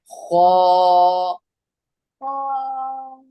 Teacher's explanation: खौ को जब हम पढ़ेंगे तो होठ गोल होंगे